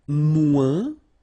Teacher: And then, moins, same thing here. Remember, we don't pronounce the final S.